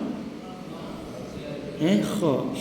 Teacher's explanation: tanpa putus suara, keluar angin dan bunyi kha, itu huruf isti'la, pangkal lidah yang diangkat mengenai langan-langan lembut